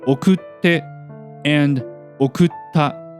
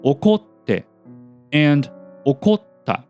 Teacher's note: the pitch of て and た follows the pitch of the last mora of the 連用形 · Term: follower type